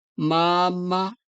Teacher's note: the second Ma has a quiet tone